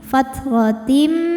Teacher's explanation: Karena tanwin menghadapi huruf mim, maka tanwin lebur ke mim. Fathratim disertai bunyi dengung, tahan. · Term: idgham bi gunnah